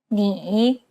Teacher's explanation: a third tone listen to an example which uses this tone it's the most unique tone out of all the tones because the pitch dips and then rises